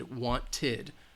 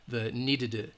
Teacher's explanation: when the final sound is a T or D, it's going to have this id sound